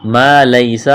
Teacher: میم ساکن کے بعد میم ہے، ادغام کریں گے میم کا میم میں ، ما لیسا الف مدہ ہے، ایک الف کے برابر کھینچنا